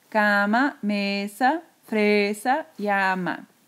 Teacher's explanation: son todas palabras graves la voz sube en la penúltima sílaba